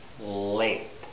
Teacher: it has to actually be touching a little Ridge behind your teeth the alveolar Ridge